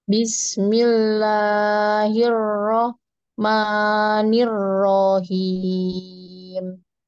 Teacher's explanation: pada kata rohim, itu ronya tidak perlu diayun. Kalau diayun, dia dua harakat.